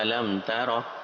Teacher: میم ساکن کے بعد لیٹر تا ہے، با بھی نہیں ہے، میم بھی نہیں ہے، تو اس کے علاوہ ہے تا، تو اس لیے یہ اظہار شفوی ہوگا، غنہ نہیں کرنا